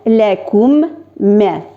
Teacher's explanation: Mim harfi ortidan so'ng mana u sakinli mim, onun ortidan kelsa mim harfi mana shu ishroqda bizning ular orasida idg'am qoidasi borlikka keladi. Mana shu sakinli mim harfi biz ortidan keladigan mim harfi ichine kirib ketadi, ham ular ikisi birga birlashalarida.